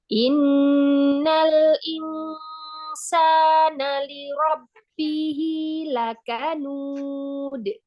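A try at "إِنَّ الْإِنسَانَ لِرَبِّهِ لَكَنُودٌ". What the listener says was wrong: Samarkan lagi nun sukun, tipiskan lagi nun ketemu sin. Insa, insa.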